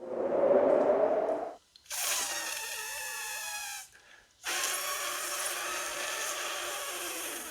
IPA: f